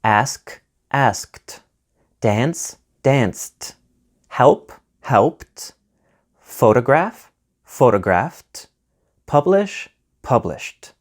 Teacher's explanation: Rule 1, T sound. The ed ending is pronounced as T after a voiceless consonant like P, F, K, Sh, Ch, S, and X. However, not after T.